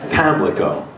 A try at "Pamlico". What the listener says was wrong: Yes, and it's not leak, it's lick.